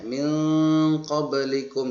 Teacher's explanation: Ikhfa artinya menyembunyikan atau menyamarkan bunyi nun sukun atau tanwin. Maksudnya, bunyi nun mati atau tanwin dibaca samar antara jelas dan dengung seperti dari bunyi N. Bunyi N menjadi eng.